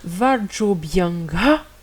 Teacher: la prononciation de ces deux petits points, c'est juste un H un peu aspiré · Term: visarga